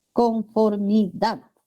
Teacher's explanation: el acento recae en la última sílaba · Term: aguda